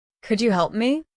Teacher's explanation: Hear how could you turns into kuja.